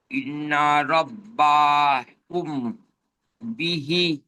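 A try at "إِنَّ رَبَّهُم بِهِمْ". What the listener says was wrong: বিহিম, বিহি নয়, বিহিম। এই হুম এখানে গণনা করতে হবে। মিম সাকিনের পরে বা এসছে ভাই।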